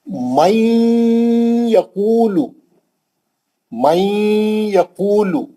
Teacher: من یقول, من یقول لام پہ پیش ہے. من, نون کو لے کے یا میں جائیں گے, نون کو لے کے یا میں گھسیں گے اور غنہ کریں گے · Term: ادغام مال غنہ